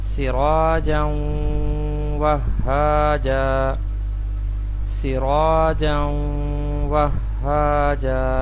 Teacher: آگے مثال ہے تنوین کی، تنوین کے بعد حرف واو ہے، تو ہم اس کو اس طرح پڑھیں گے، ملائیں گے بھی اور غنہ بھی کریں گے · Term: ادغام مع الغنہ